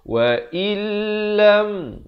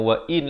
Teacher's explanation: bila nun mati bertemu lam, jadi hukum idgham bila gunnah. Apa maksudnya? Masuk tanpa dengung. Terus masuk ke dalam lam itu.